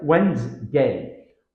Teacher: Many learners pronounce this word as it's spelled, Wednesday. However, in spoken English, the D and the Nes sound disappear.